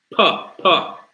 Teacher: It's blocked by the two lips.